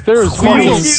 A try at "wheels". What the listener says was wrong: Never heard somebody pronounce the H so prominently in that.